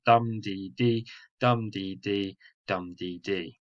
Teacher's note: the first syllable in every three is stressed followed by two unstressed syllables · However, this could be represented in terms of stressing of syllables, like dum, dee, dee. So the first syllable in every 3 is stressed, followed by 2 unstressed syllables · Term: dactylic meter